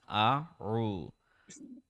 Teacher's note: Ain will be from the middle of the throat, deeper.